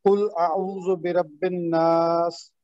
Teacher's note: اور الف حمزۃ الوصل ہے کیونکہ نون کے اوپر تشدید ہے، اس لیے بے کو نون سے ملائیں گے اور 2 حرکت دیں گے. سین حروف ہمس میں سے ہے، اس پہ سانس کی آواز آئے گی